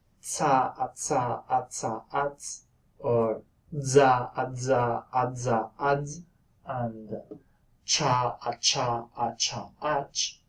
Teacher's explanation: the noise that you get after the release is homorganic with the stop constriction in the case of affricates, whereas in aspirates you invariably get a glottal noise.